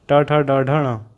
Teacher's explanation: हिंदी की मूर्धन्य ध्वनियाँ हैं